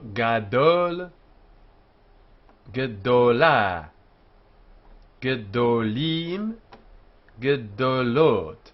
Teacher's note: And here we have o, although it's written defectively, full in the singular, gadol, and defectively in the plural, hag gedolim. The a under gadol in the plural becomes shva, because it's no longer in front of the tone syllable im having been added. So gadol, gedola, gedolim, gedolot, in which by adding the suffix o to im, the tone is changed.